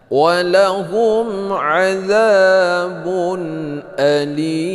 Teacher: Azab panjangnya dua harokat. Bun baris dua bertemu dengan alif, yaitu idhar hakiki.